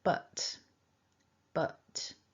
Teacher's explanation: the weak form uses that schwa that we're familiar with now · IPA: /ə/